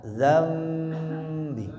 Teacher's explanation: Merubah mengubah suara nun jadi suara mim sukun. Alasannya karena nun sukun bertemu huruf ba. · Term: iqlab